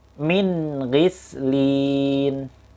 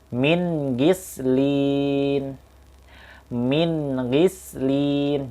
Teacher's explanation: Jelas ya, nun matinya bertemu dengan gha.